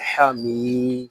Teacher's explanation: یہاں میم کو ہم ایک الف تک کھینچ کر پڑھیں گے کیونکہ یہاں یا مدہ ہو رہا ہے۔ اس کو حامی ایسے نہیں پڑھیں گے، اس کو پڑھیں گے حمی۔